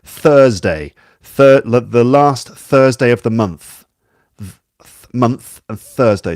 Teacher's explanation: There are basically two TH sounds, the voiced and unvoiced ones. The unvoiced one is th, like you get in Thursday